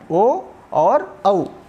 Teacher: उसके बाद ओ दौतो कंठोष्ठम, यहाँ पर यह सूत्र है। तो कंठ और ओष्ठ के माध्यम से जिन स्वरों का उच्चारण किया जाता है वे हैं ओ और औ।